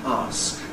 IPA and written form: ɑːsk (ask)